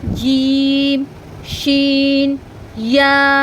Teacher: জিহ্বার ঠিক মাঝখানের দিকটা আমি উপরের তালুর সঙ্গে লাগিয়ে উচ্চারণ করছি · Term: 6 নম্বর মাখরাজ